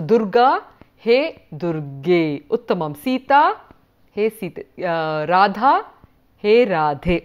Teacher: when he's calling out he will say ārye. So, the ā turns into the e.